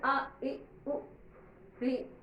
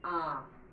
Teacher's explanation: अ से दूना समय आ में लगता है, इसलिए इसे दीर्घ स्वर कहते हैं। अ बोले आ, तो अ से दूना समय लगता है आ।